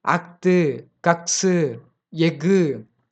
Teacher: அரை மாத்திரை அளவுல முழுமையா ஒலிக்குது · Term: முற்றாயுதம்